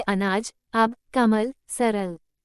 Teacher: यह अर्ध विवृत मध्य स्वर है। इसके उच्चारण में जीभ का मध्य भाग कुछ ऊपर उठता है और होंठ कुछ खुल जाते हैं।